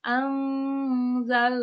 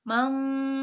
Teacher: dibacanya disamarkan dengan tempo gunah yang dipanjangkan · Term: ikhfa